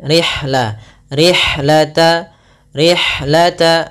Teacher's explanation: alirkan nafas pada lafal ha karena ha memiliki Salah satu sifat yaitu sifat hams